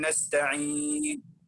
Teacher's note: ننتبه أن الصوت لا يظهر مع الإشمام، لا نقول نستعين نو.